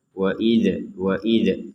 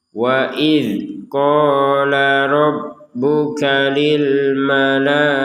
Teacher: kalau yang ada titiknya di atas ini huruf dalal tidak boleh dipantulkan